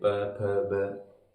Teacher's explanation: इनको दांतों को छुए इनका उच्चारण नहीं किया जा सकता और प वर्ग में ये होता है कि हमारे होठ आपस में छूते हैं · प वर्ग में ये होता है कि हमारे होठ आपस में छूते हैं, प फ ब ऐसे।